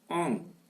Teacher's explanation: nasale, postérieure, ouverte et agrandie.